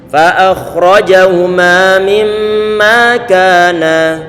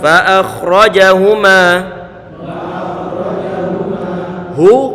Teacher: Dialirkan sedikit untuk huruf kha yang disukunkan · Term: rikhawah